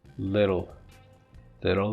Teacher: so even in the word little it is the dark L